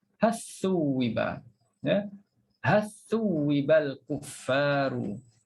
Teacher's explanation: Hilang terus huruf lam.